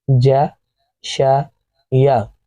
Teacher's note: تو یہ تینوں حروف زبان کے درمیانی حصے سے پڑھے جاتے ہیں. زبان کا درمیانی حصہ جیم کو پڑھتے وقت اوپر کی جانب اٹھتا ہے اور اوپر منہ کا جو اوپری حصہ ہے تالو کی طرف وہاں ٹچ ہوتا ہے.